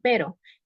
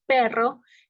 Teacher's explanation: Eh, no vibra demasiado, pero si decimos perro, ahí hay una mayor vibración · En simple es cuando es una vibración menor y en múltiple es más alargado. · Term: vibrante simple